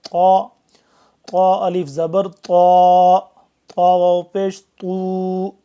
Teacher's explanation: طا کو بھی ہم موٹا اور پر پڑھیں گے